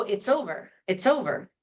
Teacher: often Why students feel like English speakers are speaking fast because we're connecting and we're not pausing after every word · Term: connected speech